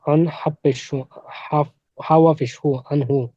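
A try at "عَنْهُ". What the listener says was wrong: না, ওয়াও নেই তো। আইন নুন জবর আন, হা পেশ হু, আনহু। হ্যাঁ, হা পেশ হু।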